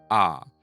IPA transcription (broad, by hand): a